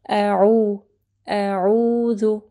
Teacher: عین کو جو ہے گلے کے درمیانی حصے سے پڑھنا ہے